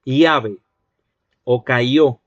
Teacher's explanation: en Perú, donde hay doble L, allí van a producir una I. Te van a decir, por ejemplo, llave o cayó, como una I.